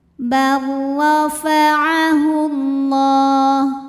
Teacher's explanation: huruf ro dibunyikan secara tafkhim karena barisnya di atas cara membacanya adalah ditebalkan pangkal lidah dinaikkan